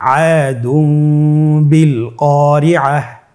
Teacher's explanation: তাহলে আমরা যেটি করব যে তানবিনকে মিম দ্বারা পরিবর্তন করে গুন্নার সহিত পড়ব